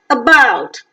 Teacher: The initial position vowel, about, is central between half closed and half open, unrounded, short vowel and weak vowel